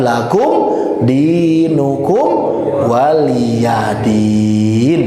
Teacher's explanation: lakum jangan ditahan lama, dinukum kumnya juga jangan ditahan lama karena idhar syafawi dua-duanya